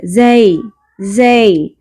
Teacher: زی، زے نہیں پڑھنا، جیسے ہم پڑھتے ہیں نا مجہول غلطی ہے، وہ زیتونی، زے نہیں ہے، زی زی۔